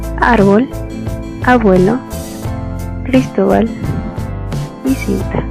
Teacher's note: el acento en estas palabras está antes de la última sílaba es decir en la penúltima sílaba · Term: graves